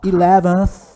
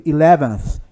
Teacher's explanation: Ó, 11th, olha a língua. Esse aí é o som do TH, é o TH que não é pronunciado, é o unvoiced.